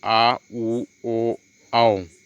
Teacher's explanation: अगला है तीसरा है पश्च स्वर। जिन स्वरों के उच्चारण में जिह्वा का जो पश्च भाग जो है ऊपर उठता है, पश्च स्वर कहलाते हैं।